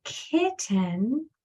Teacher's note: the first sound is voiceless you don't hear anything it's only air